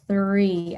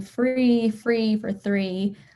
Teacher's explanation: they're working on that th sound and they are just constantly like putting an f sound